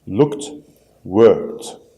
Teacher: The ed is pronounced as t.